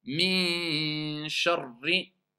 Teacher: Sharri, il y a une shidda. Il faut rester plus longtemps.